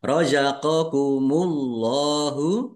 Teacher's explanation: Allahnya dibaca tebal karena harakat di depannya dummah